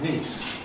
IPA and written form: niːs (niece)